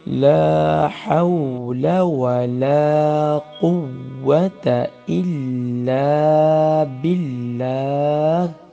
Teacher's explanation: اللہ کے لام کے اوپر ایک الف کی مقدار کھینچیں گے، آخر میں ہا کو ساکن کر دیں گے، تو ہا کا ساؤنڈ بھی پیدا ہونا چاہیے۔ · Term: کھڑی زبر